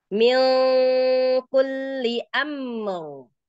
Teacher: Dialirkan mim karena punya sifat tawassut ya atau bainiyah.